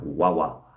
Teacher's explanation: I would maybe pronounce agua just with the W sound